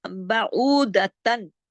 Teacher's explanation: तन की आवाज को तन की तरह नहीं बोला, हमने थोड़ा थोड़ा नाक में ले गए, इसको कहते हैं इख्फा हकीकी।